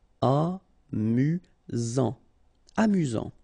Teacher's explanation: You've got only one S here between the vowels, so it's really this Z sound. Amusant. Amusant.